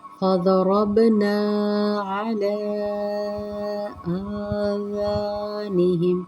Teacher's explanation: مد منفصل کا قاعدہ لگے گا جسے ہم 3 حرکات تک کھینچ کے پڑھتے ہیں